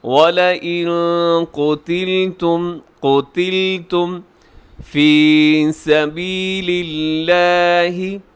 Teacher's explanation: وَلَئِن قُتِلْتُمْ فِي سَبِيلِ اللَّهِ، لفظ اللہ ہے اور لفظ اللہ سے پہلے لام کے نیچے زیر ہے، باریک رکھیے گا۔